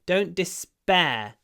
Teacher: Despair and interestingly the PE actually sounds more like bear because after a s we don't aspirate the P